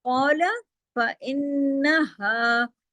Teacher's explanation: قَالَ میں کاف موٹا کریں،